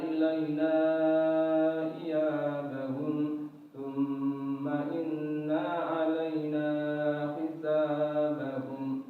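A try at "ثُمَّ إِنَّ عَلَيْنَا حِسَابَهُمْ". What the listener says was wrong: Ya, yang terakhir thumma inna alaina, na-nya yang kedua pendek ya. Jangan dipanjangin thumma inna. Nah, tadi dibaca panjang. Panjang atau pendek yang terakhir? Thumma inna. Dua harakat ya, dua harakat.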